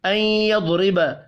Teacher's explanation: این پر غنہ ہوگا یعنی ادغام ہوگا مع الغنہ. یضرب ضاد پر پڑھا جائے گا.